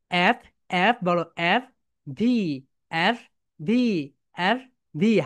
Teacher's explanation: উপরের দাঁত নিচের ঠোঁটের সঙ্গে হালকা টাচ করবে